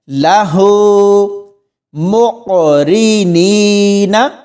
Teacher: یہاں ہا کے اوپر الٹا پیش ہے تو اس کو ہم نے کھینچ کر پڑھنا ہے